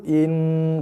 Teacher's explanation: Dengung pada nun sabdu, tekan hujung lidah, tekan pada langit depan, atas gusi tu. In berserta dengung, lepaskan.